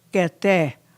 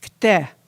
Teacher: you can't say kete, it's kte. It comes together fast.